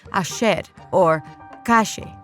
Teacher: They pronounce their double L's and Y's with a sh sound